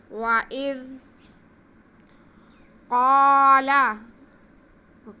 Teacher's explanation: وَإِذْ قَالَ، قَالَ میں قاف حروف مستعلیہ، اس کو موٹا کر کے پڑھیں گے